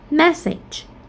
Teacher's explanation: There is a lax vowel E in the second syllable. That's why we have the primary stress on the first syllable.